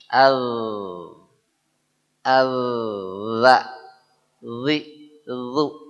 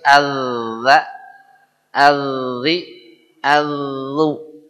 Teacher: Gigi kita yang tengah-tengah yang dua disebut gigi seri. Ujung lidah harus ketemu dengan ujung gigi seri atas dan lidahnya bergetar. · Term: Huruf zal